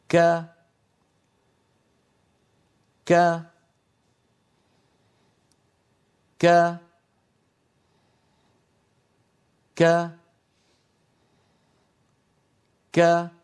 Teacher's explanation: الصوت يكون محبوسا ثم ينطلق، وكذلك النفس، لكن النفس ضعيف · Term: كاف مفتوحة